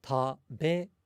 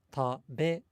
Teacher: But in Japanese, the be in taberu, it's not significantly louder or longer than the other two syllables. It only, generally speaking, has a higher pitch.